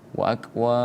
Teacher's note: Ini juga nih wa akwab, mad arid li sukunnya dulu kita baca, baru kemudian sifatul huruf dari huruf ba, yaitu qalqalah, hukum tajwidnya, ya, kita pantulkan di situ